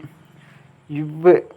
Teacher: கீழ் இதலும் மேல்வாய் பல்லும் இணைவதால் பிறக்கும் எழுத்து